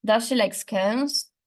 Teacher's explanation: In this case, the focus is again broad, and the nucleus is placed on the last lexical item of the IP, which is scones. The tone is rising because yes/no questions are usually said with a rising tone